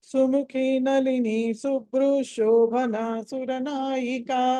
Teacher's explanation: మీరు కనుక కంటిన్యూస్ గా చదవదలుచుకుంటే శుభ్రూ తర్వాత కంటిన్యూస్ విసర్గతో షా చదవాలి. అక్కడ సుముఖి నలిని శుభ్రు శోభన సురనాయిక అని విసర్గ స్థానంలో షకారం చదవాలి.